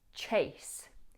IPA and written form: tʃeɪs (chase)